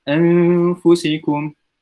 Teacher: pada huruf nun tu tak disebut an, tapi disebut gitu. Bunyi dia seakan-akan kita nak sebut ng.